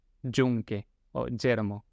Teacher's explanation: Entonces vamos con el primer sonido propuesto acá, que es el sonido de la G con el, el, el- el gorrito, que tiene un sonido que es como si fuera la CH, pero haciendo vibrar la cuerda vocales. Por ejemplo, eh, en castellano en algunos lugares, no en Argentina diríamos yunque o yermo, obviamente como si fuera una SH. · Yo lo pienso como si fuera la CH, dicha con una vibración de las cuerdas vocales.